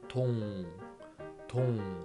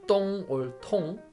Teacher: It starts from soft consonant t sound and the vowel is o